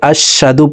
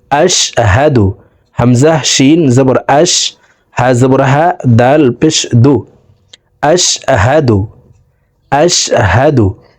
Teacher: হা হরফের উচ্চারণ হলকের শুরু থেকে হবে